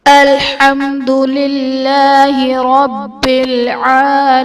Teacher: الحمد میں میم ساکن کے بعد حرف با اور میم کے علاوہ دال ہے، تو یہاں پر اظہار شفوی کا قاعدہ ہوگا، یعنی میم ساکن میں ہم غنہ نہیں کریں گے · للہ میں اس میں جلالت اللہ عز و جل کے لام سے پہلے زیر ہے، تو یہاں پر اس میں جلالت اللہ عز و جل کا لام باریک پڑھا جائے گا۔ رب العالمین میں با حرف قلقلہ مشدد ہے، تو یہاں پر قلقلہ خوب جماؤ کے ساتھ ادا کریں گے